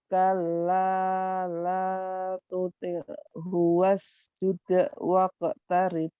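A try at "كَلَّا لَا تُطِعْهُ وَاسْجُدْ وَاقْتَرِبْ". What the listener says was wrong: Iya, tapi di situ ada ainnya ya. Kalla la tuti' huwas. Kalla la tuti' huwas jud waqtarib tuti'.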